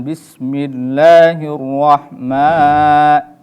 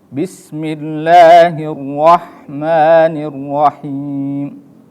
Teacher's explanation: penyebutan ma itu harus dibaca 2 harokat, jangan terlalu panjang. Jangan bismillahirrahman.